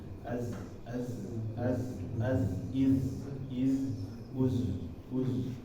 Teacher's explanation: atau Z ya Za ini dia seperti suara lebah suara lebah ketika dia sukun dia Suaranya keluar dari celah-celah yang sempit di gigi